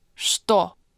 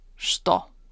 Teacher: In this word, this ch actually doesn't sound like ch at all. It's pronounced sh